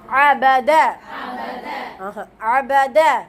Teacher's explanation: ஐன் வந்து ஆரம்பத்துல வரும் பொழுது இன்னும் நல்லா அழுத்தி நம்ம உச்சரிக்கணும்